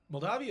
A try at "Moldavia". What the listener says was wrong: It's good to say Moldavia just so you know there's an A in there instead of an O.